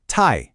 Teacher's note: you really have to practice that sharp downward drop in your voice. Think of it like a quick decisive chop.